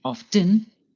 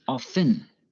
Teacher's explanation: Often can be pronounced two ways, by pronouncing the T, often, or by not pronouncing the T, often. Both forms are correct and depend on where you live.